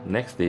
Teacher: The second process is elision, where sounds disappear. For example, next day becomes next day, and the T sound is dropped.